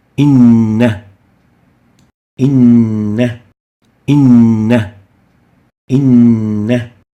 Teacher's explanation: Emphasized Noon means that we merge 2 noons together.